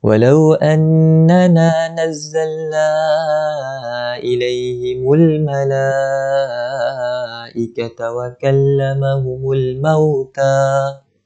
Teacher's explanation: Huruf mat bertemu dengan hamzah. Pertemuan ini di dalam satu kalimah. Maka hukumnya mat wajib mutasil. Cara bacaan dia 4 ataupun 5 harakat panjang dia.